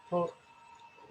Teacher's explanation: घशाच्या ठिकाणी जाणवते म्हणून त्याला म्हणतात ग्लोटल